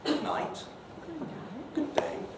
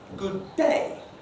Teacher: Polite farewells, and we do try and keep farewells polite, generally speaking, usually end at a kind of mid rather than at a low pitch.